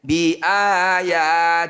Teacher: Lafaz Allah jika didahului kasroh disebut lafaz Allah tarkik. Tarkik itu artinya tipis. La dibaca apa adanya, tidak usah dirubah.